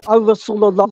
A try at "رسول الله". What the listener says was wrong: It's not Al Rasulullah.